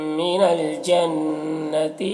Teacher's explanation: من الجنتی نون مشدد ہے، غنہ کے ساتھ میں پڑھیں گے